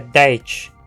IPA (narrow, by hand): dɛɪ̯t͡ʃ